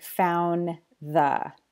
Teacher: when spoken together in connected speech these two words can make the D disappear that's because of a feature of connected speech called elision when · he didn't pronounce the D at the end of found